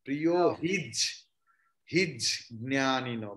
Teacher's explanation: because jna is conjunct consonant, so ja will be pronounced twice.